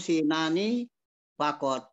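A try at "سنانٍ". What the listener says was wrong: Sinanin di tanwin kan ya, Sinanin.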